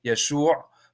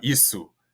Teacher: every sh in Hebrew words turn to simple s sounds so that's how Yeshua becomes uh issu in in Greek and